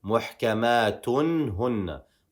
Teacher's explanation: We are going to pronounce a clear noon sakin in this example.